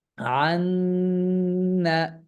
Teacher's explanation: আন্না, এই যে এটা যে পড়লাম, হ্যাঁ, এই নুনের সাথে তাসদিদ যুক্ত হওয়ার কারণে এখানে একটা গুন্নার সৃষ্টি হলো, এবং এই গুন্নার সৃষ্টি গুন্নাটার আওয়াজ আমরা কিভাবে করব? আমরা তখন নাক থেকে একটা আওয়াজ নির্গত করে আমরা পড়ব